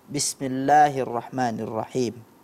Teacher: pelafalan kasroh pada Basmalah ya Bismillahirrahmanirrahim itu terdengar kurang jelas seperti suara e